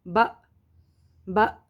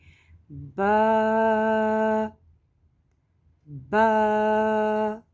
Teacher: اس میں اصل با کی ادائیگی یہ ہے کہ جب دونوں ہونٹوں کے تر حصے کو ہم ملائیں گے اور ایک الف کے برابر ہم مد کریں گے تو وہ ادائیگی با کی صحیح ہوگی. ادا کریں گے با، اور ذرا سختی کے ساتھ لگائیں گے با با.